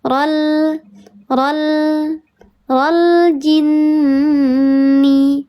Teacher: Dibacanya dia didengungkan lebih utama 3 harokat daripada 2 harokat. Ya. 3 harokat dibacanya dengung. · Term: gunnah musyadadah